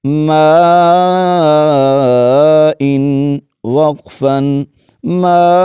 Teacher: یہاں پر مد متصل ہوگی، وقف کی حالت میں حمزہ کو جھٹکے کے ساتھ پڑھیں گے